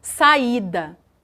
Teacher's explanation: O I, ele não é pincelado, ele é pronunciado de uma maneira tão forte quanto o A. É por isso que não é possível colocá-lo numa mesma sílaba, ok? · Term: hiato